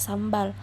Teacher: Di sini huruf M dan B itu sama-sama letaknya di bilabial.